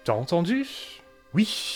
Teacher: end rhythm groups with a heavy, breathy vowel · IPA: T'as entend[y̥ç] ? Ou[i̥çː]